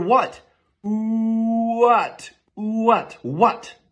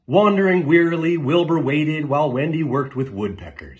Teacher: what what wandering wearily Wilbur waited while Wendy worked with woodpeckers every word in that sentence started with an incredibly quick ooh and then moved on to another vowel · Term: Glides